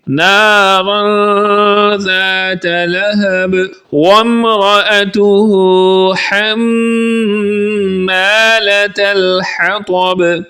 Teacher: نارا ذات لہب وامرأته حمالة الحطب، واو کو میم کے ساتھ ملائیں گے، وامرأته میم پر شد ہونے کی وجہ سے یہاں پر غنہ کریں گے